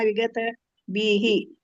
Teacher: ವಿಗತ ಬೀಹಿ ಬಿ ಅಂತ ದೀರ್ಘ ಇದೆಲ್ಲ